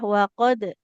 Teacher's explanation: Oke, sama tadi ada huruf sukun qalqalah ya, wa qad. Huruf dal itu kalau dalam kondisi sukun pastikan dia memantul.